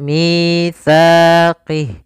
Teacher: lafal mi panjang 2 harakat yaitu mad tabi'i, kasrah bertemu ya sukun, panjangnya 2 harakat